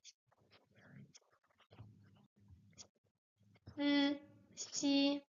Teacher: It's an S sound like the S, but it's a bit more wet, sibilated because it's not pronounced with the point of the with the tip of the tongue up, but also a bit of the middle part of the tongue is raised. So it's wetter because the middle part of the tongue is wetter than just the point.